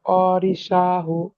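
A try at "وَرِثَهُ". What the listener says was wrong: জি মাশাআল্লাহ।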